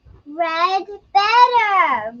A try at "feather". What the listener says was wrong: A red feather. Feather. Feather. Feather. Not better. I had no idea what you were saying.